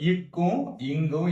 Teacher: நாவினுடைய முதல் பகுதியானது மேல்வாய் அண்ணத்தினுடைய அடிப்பகுதியை தொடுவதால் இக்கு இங்கு உண்டாகுது.